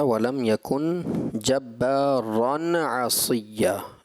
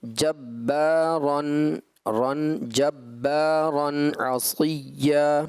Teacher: چونکہ تنوین ہے, غیر کلکلہ ہے, لہٰذا اس میں کلکلہ نہیں ہوگا, تنوین نون ساکن ہوتا ہے